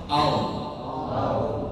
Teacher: makhrajnya ujung lidah ke gusi bagian atasnya, ke gigi depan, nah ke gusinya di atas